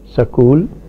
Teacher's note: the Punjabi pronunciation of the word school is sakul there is insertion of the vowel in the middle · There is insertion of the vowel in the middle in this word. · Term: anaptixis